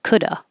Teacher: But you can also just not pronounce the V and say coulda.